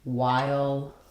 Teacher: Same as the first part of the word wild. As we're saying the I to the ul sound, the I is a front high vowel, and the dark ul has a little bit of a schwa before it. · So we call it letter I, and that's the I diphthong. So it's a sliding vowel. And then the H is silent in while.